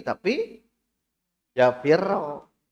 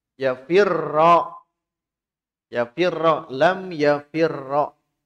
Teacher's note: Ro dengan ro kan sama satu huruf. Maka lebur. Nah, lebur itu idgham namanya. Agar jangan hilang ciri lebur, maka harus ada tasydid.